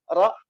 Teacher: ketika mengucapkan huruf ro ro itu ada ujung lidah kita dia bergetar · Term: taqrir